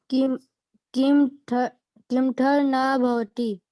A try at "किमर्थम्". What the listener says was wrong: हाँ, कीमथा नहीं लिखाया है, क्या लिखाया है ये पता है? कीमथ और ऊपर में र और उसके बाद आम की मात्रा, किमर्थम, क्या हो जाएगा? किमर्थम।